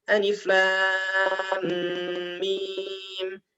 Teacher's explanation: Ini cepat, tapi tetap dengung-dengungnya dijaga.